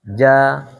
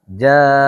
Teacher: Disebabkan oleh hamzah, panjangnya 4 sampai 5 harokat.